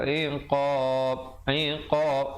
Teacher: dan diwaqafkan qalqalah kubra. Di situ ba-nya diberikan pantulan kadar 2, 4 atau 6 harakat.